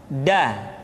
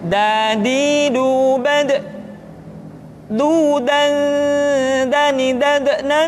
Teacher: diucapkan dengan menyentuhkan ujung lidah kita dengan bagian gusi-gusi dua ujung dua gigi seri bagian atas nah kesalahan yang sering dilakukan adalah menyentuhkan ujung lidah dengan langit-langit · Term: huruf da